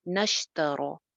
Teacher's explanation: اولا نہیں، اولئک الذی نشترو، نش شین کی آواز چلتی ہوئی، رو سنگل حرکتیں ہیں، لمبا نہیں کریں گے، رو موٹی رہے گی کیونکہ زبر کے ساتھ ہے